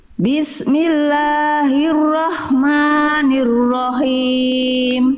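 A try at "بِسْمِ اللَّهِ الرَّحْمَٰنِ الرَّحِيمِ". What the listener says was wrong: Oke, la dan ma-nya kepanjangan, 2 harokat ya Bunda ya. Bismillahirrahmanirrahim.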